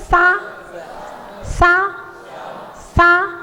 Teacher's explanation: जी ये स उससे का उच्चारण मतलब एक बार देखो सीटी वाला वो सरोते वाला सा होता है ना, मोक्ष ये सा दंती सा कहला जाता है। दांत के पीछे जीभ लगती है तब इसका उच्चारण होता है।